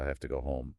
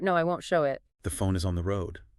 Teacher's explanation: that O starting round and then tightening into the ooh as you say them